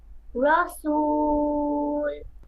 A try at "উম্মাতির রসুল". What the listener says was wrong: হ্যাঁ এই তো এখন কি সুন্দর স্পষ্ট হচ্ছে কথা